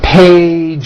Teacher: Okay, so let's look at the word page, for example, which ends in a voiced sound. 1 page becomes 2 pages with that voiced Z.